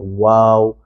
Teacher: جب ہم واو پڑھتے ہیں تو ہمارے ہونٹ گول ہوتے ہیں